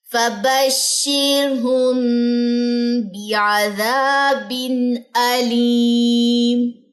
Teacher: یہاں پہ میں نے غنہ کیا ہے کیونکہ میم ساکن کے بعد با ہے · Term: اخفاء شفوی